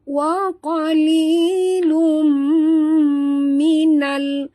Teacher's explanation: tanwin baris 2 depan bertemu dengan mim, tutup mulut, dengung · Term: idgham ma'al gunah